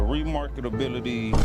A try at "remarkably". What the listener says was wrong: Yo, my boy, you're adding like you're adding syllables, my boy.